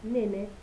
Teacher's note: las vocales E de la palabra nene están nasalizadas por efecto coarticulatorio de las consonantes nasales que están al lado de ellas.